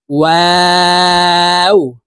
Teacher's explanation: ওয়াও হরফ ঠোঁট গোল করে দুই ঠোঁটের মাঝে ফাঁকা রেখে উচ্চারণ করব।